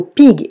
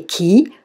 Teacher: Dans les mots pig et key, nous avons le son i. Mais dans pig, le i est court, alors que dans key, le i est long